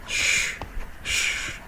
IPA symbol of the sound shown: ʃ